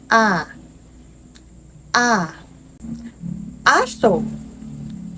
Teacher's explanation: Ito ay pasentral at mababa